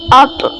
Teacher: یاد رہے طا کو موٹا پڑھنا ہے